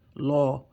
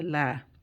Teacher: if it's a fatha or dhamma, we treat the lam like as a round letter, law. And if it's a kasra, we treat it like a flat letter, la.